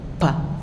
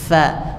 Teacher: Harusnya fa itu hanya bibir bawah saja.